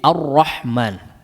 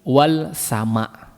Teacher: perhatikan di situ misalnya ar-rahman ada ada Alif lamnya tidak ada kenapa lamnya tidak dibaca karena di idgham kan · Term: idgham Syamsi